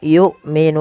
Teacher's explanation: hamzah harus ditahan suaranya dan ditahan nafasnya karena sifat hamzah ada syiddah dan jahar. Nun ada mad arid lis sukun sebagaimana yang sudah kita bahas tentang mad arid lis sukun.